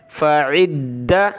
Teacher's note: فعدۃ, فا زبر فا, عین دال زیر عد, دال زبر دا, عد, دال کو سخت کریں گے تشدید کی وجہ سے